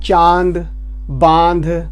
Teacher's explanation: वायु मुख व नाक दोनों से निकलती है। जैसे आप बोलते हैं चांद, बांध, इसके अंक की बिंदी जो होती है ये वाली, चंद्र बिंदी जो इसे बोलते हैं हम, ये वाली, जब इसका उच्चारण करते हैं तो मुख और नाक दोनों का यूज होता है। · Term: अनुनासिक